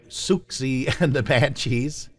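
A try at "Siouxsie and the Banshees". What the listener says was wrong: I think it's Susie and the Banshees, actually. The X is silent.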